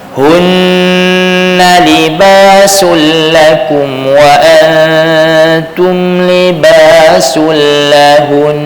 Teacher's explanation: kalau lahun saja tak cukup. Lahun kena panjang sikit lagi. Jadi cukup 2 harakat. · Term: nun musyaddadah